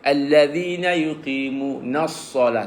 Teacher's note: Lam tu tak baca. Nas-salah masuk terus sad. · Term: alif lam syamsiyah